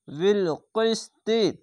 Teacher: কফটিকে মোটা অক্ষর তার জন্য কফজের কিস মোটা করে পড়ছি